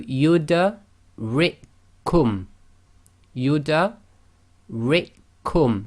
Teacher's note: So we just completely ignore that first kaf.